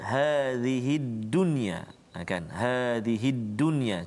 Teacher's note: Sebelum ni kita belajar idgham ma'lunah dunya, tapi bila satu kalimah bertemu dalam satu kalimah, dia tak ada idgham ma'lunah tu, dia jadi izhar mutlak. Maknanya kita kena jelaskan dunia, tak boleh dengung kat situ, jelaskan bacaan kita.